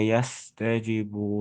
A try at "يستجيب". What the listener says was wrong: You see, the jim has a mat.